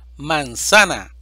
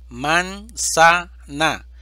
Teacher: sílaba tónica sa es palabra grave o llana